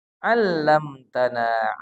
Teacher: mim mati bertemu ta tidak boleh dibaca dengung